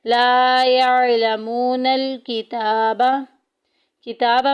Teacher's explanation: ताके ऊपर खड़ी ज़बर एक अलिफ के बराबर लंबा करेंगे